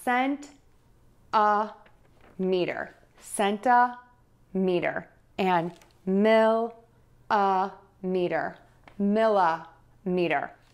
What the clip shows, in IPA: sɛntəˌmitər